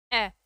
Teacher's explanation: अ का उच्चारण करते समय हमारी जीवा मध्य में ही रहती है और अ का उच्चारण यहां से होता है अ। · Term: उदासीन स्वर